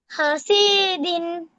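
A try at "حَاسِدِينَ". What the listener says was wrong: হয় নাই, শীত টান হয়ে গেছে, টান অন্য জায়গায়। শীতে টান হবে না। হাসিদিন। ডি হবে না, হাসিদিন।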